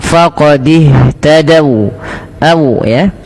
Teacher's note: waw di sini berhenti, wawnya dimonyokkan.